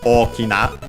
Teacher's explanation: the accent of Okina is on the first syllable